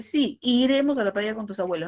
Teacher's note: si le cambio el tono hacia abajo tengo la posibilidad de que esa pregunta sea una declaración